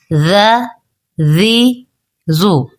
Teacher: ذال زبر ذ، حروف الاسویہ میں سے ہے، زال نرمی کے ساتھ پڑھا جائے گا، بغیر سیٹی کے پڑھا جائے گا۔ ذال زبر ذ، ذال زیر زی، ذال پیش زو، ذ زی زو۔